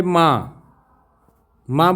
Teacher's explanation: इसमें होता है उच्चारण जब करते हैं तो नाक और मुख दोनों से होता है। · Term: अनुनासिक